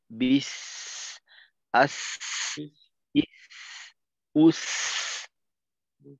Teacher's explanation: এই আওয়াজটা আরেকটু প্রকাশিত থাকবে. সিনের ক্ষেত্রে কিন্তু শুধুমাত্র আওয়াজ চালু রাখার সময় বাতাসটা থাকাটা যথেষ্ট না, আওয়াজটাও কিন্তু একটু উঁচু হওয়া দরকার. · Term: সফির সিফত